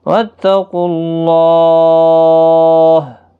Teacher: قاف حروف مستعلیہ ہے، پر پڑھنا ہے